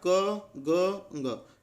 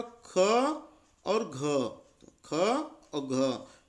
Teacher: इनको बोलने में श्वास वायु जो होती है, जो हम हवा सांस लेते हैं, वो थोड़ी ज़्यादा बाहर निकलती है ना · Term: महाप्राण व्यंजन